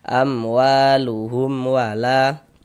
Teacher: Silnya wa dibaca panjang. Mad thobi'i panjang dua harakat.